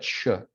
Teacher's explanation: stop has two phases but it's a little bit different so the first phase is like a stop where you have occlusion